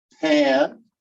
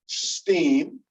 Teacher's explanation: Voiceless stops become aspirated, syllable initially. That means at the beginning of a syllable in stressed syllables.